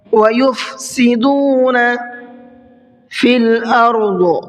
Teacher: ضاد کو منہ بھر کے پڑھنا ہے اور آیت کریں گے تو ضاد کو ساکن کر کے آیت کریں گے۔